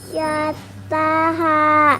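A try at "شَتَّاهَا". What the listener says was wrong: Iya betul.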